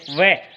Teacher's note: दांत और होठ के दोनों के माध्यम से जैसे आप वह बोलें वह, तो यहाँ दांत स्पर्श होगा तो वह जो है वह वर्ण वो दंतोष्ठ का है।